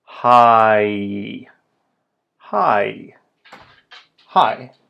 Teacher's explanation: the vowel ah, and then follow it with the vowel e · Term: diphthong